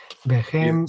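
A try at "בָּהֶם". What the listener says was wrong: So either wahem or waem, but certainly not wachem. You don't want to do cha.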